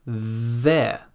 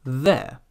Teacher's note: the tongue is just a little bit out of the mouth but still between the teeth